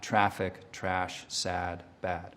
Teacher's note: So you'll get something more open like my own ah, traffic, trash, sad, bad.